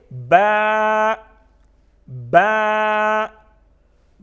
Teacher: با کی آواز میں تھوڑی سی جنبش اس لیے پیدا کرتے ہیں کیونکہ یہ حروف قلقلہ میں سے ہیں.